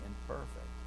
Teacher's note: But because the one begins with a P, it's going to cause the other letter to change. So the change of the N, an alveolar nasal, to a M, which is a bilabial nasal, it's conditioned by the P imperfect, right? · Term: regressive assimilation